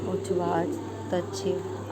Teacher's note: ता के बाद शा हो तो ता का चा तथा शा का छा बन जाता है